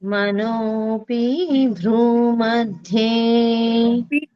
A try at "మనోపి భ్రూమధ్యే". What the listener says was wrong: పొల్లు లేదమ్మా. మనోపి భ్రూमध्ये కామ అక్కడ. మనోపి భ్రూमध्ये మనోపి భ్రూमध्ये